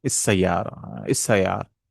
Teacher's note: So here is السيارة, الطيارة. The lam sound is gone